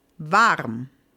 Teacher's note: most cases we will just say vam we won't even say the r particularly in Austria and the more southern areas of Germany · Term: R sound